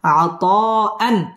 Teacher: মদ মুত্তাসিল চার আলিফ টানে পড়তে হবে